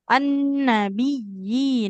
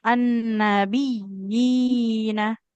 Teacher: huruf ya bertasydidnya dia lebih ditekan ya.